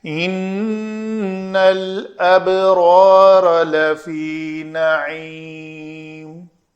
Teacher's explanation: نون مشدد ہے، غنہ کیا جائے گا۔